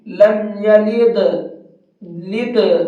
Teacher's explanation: ان میں سے کسی حرف پر بھی اگر جزم آ جاتا ہے تو اس کے اندر ہلکا سا قلقلہ کرتے ہیں، آواز کو ڈبل کر کے پڑھتے ہیں۔